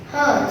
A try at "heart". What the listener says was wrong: Heart, not hurt. Heart.